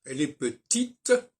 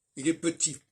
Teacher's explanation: on n'entend pas le T de petit. Et donc, le masculin supprime des consonnes, alors que le féminin renforce les consonnes.